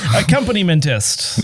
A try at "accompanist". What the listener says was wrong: I think people add more syllables to that word. There's accompanist, accompaniment-ist. It's just accompanist. It's simpler than you think. Accompanist.